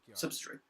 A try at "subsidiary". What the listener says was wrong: Subsidiary. Subsidiary is the incorrect way of pronouncing it. And it kind of sounded like you were trying to say subsidy, and I was just like, what are you talking about?